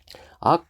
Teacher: 악 하면은 숨이 나오다 막힌다, 걸리는 거죠. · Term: 자음